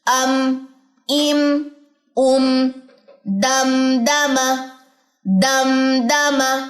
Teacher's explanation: میم خشکی والے حصے سے ادا ہوتا ہے, دونوں ہونٹوں کی انوالومنٹ